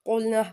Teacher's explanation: قاف لام پیش کل حروف مستعلیہ، اس کو پور پڑھیں گے